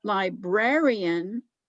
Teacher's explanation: then you emphasize the middle of the word librarian